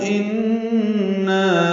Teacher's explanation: ان نون مشدد پہ غنہ ہے